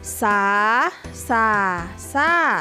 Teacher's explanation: คำว่าสาจะเป็นเสียงจัตวาส่าจะเป็นเสียงเอก